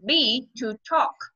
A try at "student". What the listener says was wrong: Student, hạ cái nhẹ cái đính lại, đừng có đọc thành là đến. Đến là thành âm tiếng Việt rồi. Student, drop cái âm xuống, hạ cái âm xuống nhẹ nhàng lại. Student. Đó, một cái đầu tiên đó là từ student thì cái đuôi đến cần phải nhẹ nhàng lại, hạ xuống.